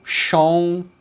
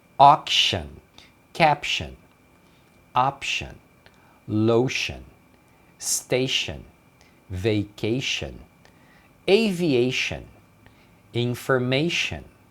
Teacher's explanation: a pronúncia desse T-I-O-N é shan, shan